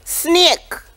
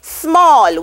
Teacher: insertion of a vowel between the consonants SM and SN.